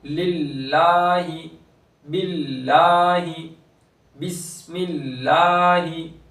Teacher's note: लफ्ज़ अल्लाह का लाम है लेकिन उससे पहले वाले हर्फ के नीचे ज़ेर है इसलिए अब यहाँ पर बारीक होगा लाम।